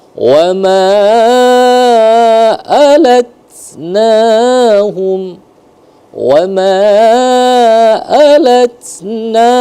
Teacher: alatnahum dengung karena idgham mimi, min'a itu dia jelas karena izhar halki, hukum izhar.